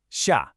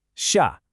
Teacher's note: Think of it more like a forceful downward chop. Imagine you're giving a firm command like go or stop. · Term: fourth tone